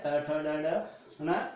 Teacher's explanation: मुर्धन ट वर्ग जो है मुर्धन से प्रयोग किया जाता है